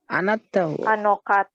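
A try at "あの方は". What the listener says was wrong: Ya, sekarang diucapkan wa-nya jangan dipisah, ulangi.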